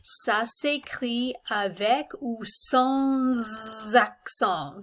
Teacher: So notice that when the S, this normally silent S at the end of sans, when it's joined onto a word that begins with a vowel, we have a liaison and we pronounce the S.